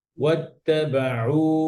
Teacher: আইন যেন গলার মাঝখান থেকে আসে